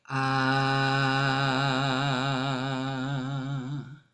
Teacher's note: the ah sound is made really low, like a low tone